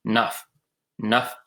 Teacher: this is a sound F made with your two lips without the teeth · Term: bilabial fricative